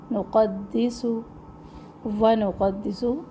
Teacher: قاف موٹے حروف میں سے ہیں، قاف کے ساتھ نون کو موٹا نہ کرے ، دال کو بھی موٹا نہ کرے، نقدس سین میں سختی